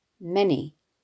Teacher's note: The word is trochaic, dumdy, with the stress naturally falling on the first syllable, i.e. many, which disrupts the rhythm of these two lines and adds a sense of weight to them.